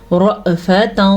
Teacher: حمزہ کے اوپر جب بھی ساکن آ جائے تو جھٹکا پیدا ہوتا ہے. جھٹکے کے ساتھ حمزہ پڑھی جائے گی اور را پر پڑھنا ہے.